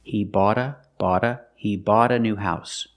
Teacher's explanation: stop T I bought the car I bought the car but if you have a vowel after bot then it changes to a fast T because the t is between vowels